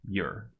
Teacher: Since your is just a helper, a possessive pronoun, and we’re not emphasizing it, we’d use the weak form.